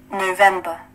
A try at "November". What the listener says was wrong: November. Đọc cái kiểu Mỹ nghe sáng hơn chút xíu, bà kia đã đọc âm trì quá.